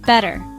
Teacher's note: 2 syllables. First syllable is stressed.